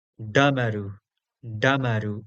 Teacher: It is, again, a retroflex D.